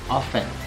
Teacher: Nah, itu kan kebanyakan orang-orang tuh ngucapinnya often gitu, ya kan, tapi sebenarnya itu silent T sound, jadi T-nya tuh nggak dibaca